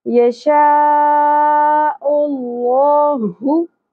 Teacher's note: اقصی حلق سے گہرائی کے ساتھ آواز کلیئر کریں